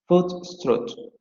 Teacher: La primera palabra se va a pronunciar con el fonema posterior medio cerrado labializado, mientras la segunda palabra se va a pronunciar con el posterior semiabierto no labializado.